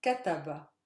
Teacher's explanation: my stress lies on the first syllable again because the last one is not super heavy the one before it is not heavy so it's the first